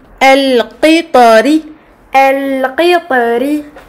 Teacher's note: du fait de la présence de la kasra sous le ra, cette lettre est amincie